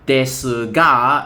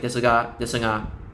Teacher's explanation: There is still a G sound, but it's not as like prominent.